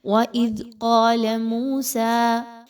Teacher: قاف کے ساتھ تو الف موجود ہے، قاف الف مدہ کی صورت میں لکھی گئی ہے لیکن لام کے ساتھ الف نہیں ہے، تو آپ نے یہاں پر لام کی حرکت کو بہت کم رکھنا ہے